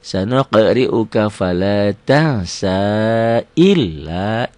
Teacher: Sanuqri'uka fala tansa illa biasa aja, L-nya double aja tanpa ditahan, tanpa dengung. Beda dengan nanti mim dan nun bertasdid guna ya.